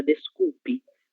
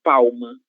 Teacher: a letra L no final de sílaba, ela tem som de U.